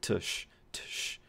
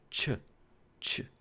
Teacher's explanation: these are just the symbols for t and sh, but we're doing them at the same time. So instead of t, sh, t, sh, we do them together, ch, ch.